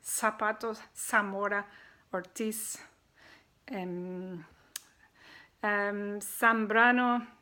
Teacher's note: it's not pronounced like a Z sound, but just like a S, like an S sound